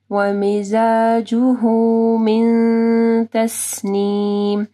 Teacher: من نون ساکن کے بعد تا ہے، ٹھیک ہے، یہاں پہ اخفا غنہ ہوگا